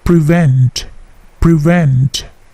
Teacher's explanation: P-nya tidak plosif ya, bukan prevent, tetapi prevent, prevent